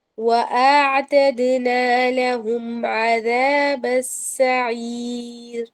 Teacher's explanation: وَأَعْتَدْنَا سے لے کے سعیر تک سب کچھ باریک ہے، انکلوڈنگ را، سب کچھ باریک رہے گا